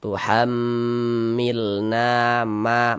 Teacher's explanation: Sehingganya na dibaca panjang. Mad thobi'i panjang dua harakat